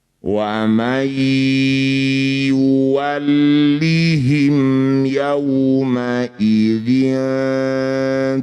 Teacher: Nun sukun bertemu ya disebut bacaan namanya idgham bi gunnah. Bunyi nun masuk pada ya, dengungkan 2 harokat.